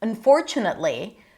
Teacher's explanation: Usually you would just stress the for.